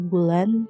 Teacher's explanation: Kalau ada tekanan biasanya dalam kata bulan, tekanan itu terdapat pada suku kata terakhir yaitu lan